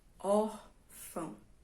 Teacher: Órfão, não é? A mais forte é a penúltima.